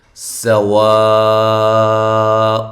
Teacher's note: سین کو باریک سیٹی کے ساتھ